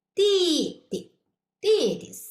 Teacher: The second character is lighter and shorter